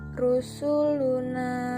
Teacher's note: cara membacanya panjang dua harakat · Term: Mad Thobi'i